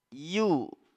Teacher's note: makhraj huruf ya selanjutnya itu di lidah bagian bagian tengah ya yang menyentuh langit-langit